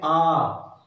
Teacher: आ जब बोलते हैं तो हमारा पूरा मुख खुल जाता है। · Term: विवृत स्वर